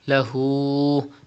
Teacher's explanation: Stretch ulta pesh up to 2 harakat.